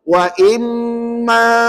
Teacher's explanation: bila berhenti jangan 45 harakat, 2 harakat aja. Wa imma sebut 2 harakat aja, jangan terlajuk 45.